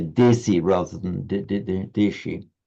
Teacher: in colloquial Hindi sometimes a sh becomes a s